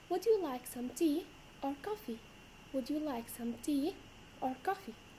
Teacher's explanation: In this case, our voice goes up at the first one and down at the second one.